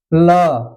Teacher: जो नोक है थोड़ा ऊपर उड़ता है ल बोलकर देख लीजिए जीवा का जो नुकीला भाग होता है वह ऊपर उड़ता है और जाकर के वह ऊपर के मसूड़े से स्पर्श करता है और अंदर से आती हुई जो वायु है वह बगल से जगह पा कर के निकलती है